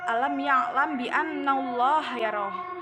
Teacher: Ikhfa syafawi adalah saat mim sukun bertemu dengan ba dengan menyembunyikan samar-samar di bibir disertai dengan dengungan. Contoh bacaannya adalah alam ya'lam bi annallaha yarah, sebab mim mati bertemu dengan ba.